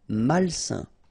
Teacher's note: A-I-N together, it's a nasal and it's un.